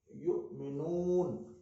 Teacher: यु, ये हमजा आ गया, यु झटके के साथ अदा हुआ